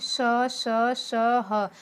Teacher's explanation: जब मैं इनको बोल रही हूँ तो श यानी उष्म, गर्मी जैसा सांस निकल रहा है, इसीलिए इसे उष्म व्यंजन कहा जाता है।